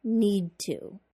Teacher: start saying the d sound in need, but I don't finish it. I go straight into the t- sound in to